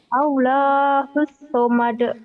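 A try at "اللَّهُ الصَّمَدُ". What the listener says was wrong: Allahus samad. Allah, jangan gitu. Allahus samad. Gitu lagunya. Allahus samad.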